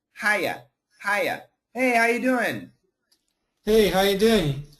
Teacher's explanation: We grammatically need the R, but we don't hear it. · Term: missing the R